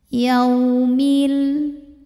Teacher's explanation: Sebab ada waw sukun didahului baris fathah, maka bacanya lembut. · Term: harfulin